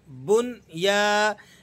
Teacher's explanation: آپ نے بغیر غنے کے اس کو پڑھنا ہے، اور یا الف زبر یا، کیونکہ یا الف مدہ آ گیا اس لیے ہم یا کو کسی قدر کھینچ کر پڑھیں گے